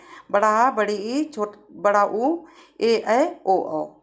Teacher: बड़ा आ, बड़ी ई, बड़ा ऊ, ए ऐ ओ औ। इनके उच्चारण में ह्रस्व स्वर की अपेक्षा दुगना समय लगता है। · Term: दीर्घ स्वर